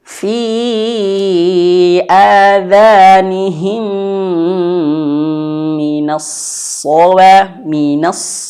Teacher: mim mati jumpa dengan huruf mim maka harus ditahan